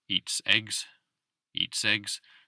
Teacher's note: focusing on that s moving into the following vowel or the next syllable